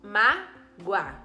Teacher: esse mágoa é escrito com o mas o som é de U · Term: semivogal